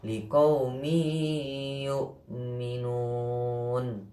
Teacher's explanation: Adapun lamanya, berdengung lamanya itu kira-kira 1,5 alif ya, 1,5 alif atau 3 harokat